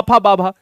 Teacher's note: हमारे ओठों का इस्तेमाल हुआ ओस्ट हो गया